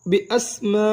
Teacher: میم الف مد زبر ما. 6 حرکات لمبا ادا کریں گے. بی اسماء حمزہ زیر ای ہا کھڑی زیر ہی بی اسمائہی.